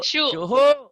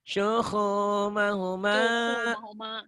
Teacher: Sunya pendek. Panjangnya hu.